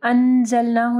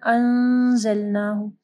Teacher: نون ساکن کے بعد زا ہے، ٹھیک ہے، یہاں پہ اخفا غنہ ہوگا، یعنی انزلناہ نہیں پڑھنا، انزلناہ.